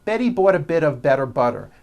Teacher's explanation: Again, notice that you do not hear any T sounds.